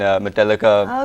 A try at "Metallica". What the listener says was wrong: Metallica. You can't even say it properly. Like you have to elongate the A.